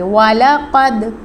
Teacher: دال ساکن پر قلقلہ کریں گے